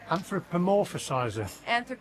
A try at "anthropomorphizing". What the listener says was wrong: You added a syllable in there. Anthropomorphism.